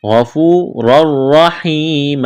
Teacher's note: غین کو موٹا کرنا ہے، واو مدہ ہے، الف کے برابر کھینچنا ہے، را کو موٹا کریں گے، 2 زبر تنوین ہے، تنوین کے بعد را ہے، ادغام کریں گے بغیر غنہ کے، را کو موٹا کرنا ہے۔